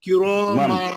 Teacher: नून के आवाज को छुपा के नाक से गुन्ना करो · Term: इख्फा